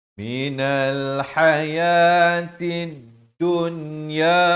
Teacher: Ha pedas di pertengahan kerongkong.